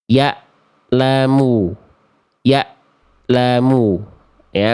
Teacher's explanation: Kalau hamzah dari pangkat tenggorokan suaranya terputus.